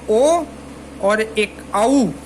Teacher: कंठ ओष्ठ जो है उससे औ और ओ जो है वो दोनों उच्चारित होते हैं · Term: कंठोष्ठ